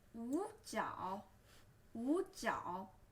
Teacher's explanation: But remember, when you read this, you are not saying 五角 because when there's two third tone become together, the first third tone become lighter